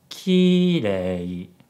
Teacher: If you want to say 綺麗, clean, or beautiful, the pitch pattern is high, low, low. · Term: pitch accent